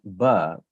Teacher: is pretty much the same but the only difference is that the voicing is going to happen slightly earlier compared to if I when I was saying the sound per